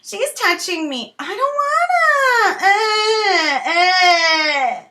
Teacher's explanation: there's actually no pressure in the larynx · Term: a child whining